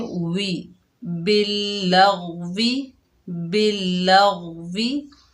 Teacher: वाव के नीचे जेर बगैर खींचे पढ़ेंगे। वाव को अदा करते वक्त होंठों को मुकम्मल गोल करेंगे